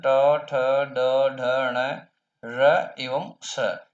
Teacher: इनका उच्चारण मूर्धा से होता है, अतः ये मूर्धन्य वर्ण है।